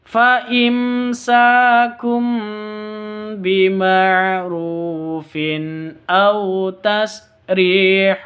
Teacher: tanwin bertemu dengan Hamzah jelas bacanya karena izhar halqi